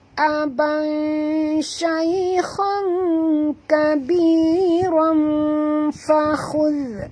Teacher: Okey, ikhfa ni dia bertemu dengan fa. Tanwin bertemu dengan fa, maka kita sorokkan bunyi tanwin ke dalam huruf fa.